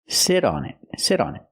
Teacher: that T in sit changes to a fast D because it's between vowels